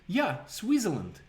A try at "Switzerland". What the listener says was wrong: I'm making fun of the way you pronounce it. Sounds like Twizzler.